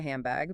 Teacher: Very often it assimilates to handbag because your tongue anticipates the B sound coming up and prepares for it early by making an M sound.